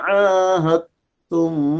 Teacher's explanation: Caranya pada waktu ha tu menuju dal kita langkaukan kepada makhraj ta. Dal tak masuk dah. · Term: Idgham mutajanisain